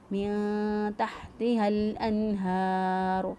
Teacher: تحتها ہا کو لام کے ساتھ ملا دیا، من تحتها الانہار، ہا کھڑی زبر ہا، ایک الف کے برابر لمبا کیا ، را کو پر پڑا کیونکہ را کا پر پیش ہے،